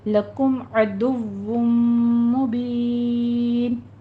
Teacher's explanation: तनवीन का कायदा इदगाम अल गुन्ना हो रहा है, सख्ती करके पढ़िए इसको, और फिर आगे वुम में इदगाम अल गुन्ना कर देंगे। मुबीन में मद आरिस वक्फी पैदा होगी, इसको भी 6 काउंट करना है।